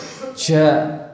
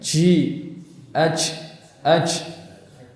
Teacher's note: Ja, misalkan ji, aj. Nah, ini kesalahan yang disebabkan karena dia tidak merapatkan makhrajnya, dia memberikan celah untuk udara